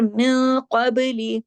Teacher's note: پھر من قبلی، نون ساکن کے بعد قاف آ رہا ہے یا اخفا ہو رہا ہے، تھوڑا موٹا کر کے، قبلی قاف کو موٹا کرنا ہے، اس وجہ سے یہاں اخفا بھی موٹا ہوگا، تھوڑی دیر تھوڑی سی ناک میں چلی جائے گی آواز. اور با پہ کلکلا ہوگا کیونکہ با جو ہے میں نے بتایا نا 5 حروف قاف تو با جیم دال، یہ 5 جن کی ایک ٹرم بنی ہوئی کتب جد، یہ 5 حروف اگر سکون کے ساتھ آتے ہیں تو ان پر یہ ہوتا ہے کلکلا، ٹھیک ہے.